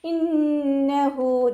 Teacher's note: നൂനിന് ശബ്ദ വന്നു അക്മൽ ഉന്നയാണ് നല്ലോണം മണിച്ചു കൊടുക്കുക. ഹ വമീറിന് ശേഷം വാവു സഗീറ വന്നു 2 കൗണ്ട് നീട്ടിക്കൊടുക്കുക.